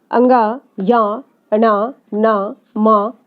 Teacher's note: नासिक्य यानी सभी वर्गों के पंचम वर्ण नासिक्य से उच्चारित किए जाते हैं।